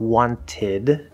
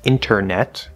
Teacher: wanted we very very commonly pronounced this not wanted but wanted the t will just completely disappear inside of a word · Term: nt plus vowel